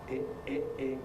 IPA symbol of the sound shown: ɪʔ